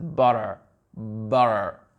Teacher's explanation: Vu qu'on a déjà le T qui fait un sort de D, donc le R, il va être vraiment, on va vraiment pas l'entendre.